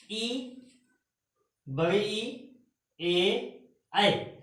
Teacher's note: जब इन शब्दों को बोलेंगे तो जीभ का जो हमारा पहला हिस्सा है वो क्रिया करता है, कार्य करता है इनको बोलने में। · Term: अग्र भाग